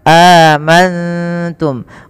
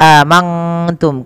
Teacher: cara membacanya nunnya samarkan kepada huruf ta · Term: Ikhfa Hakiki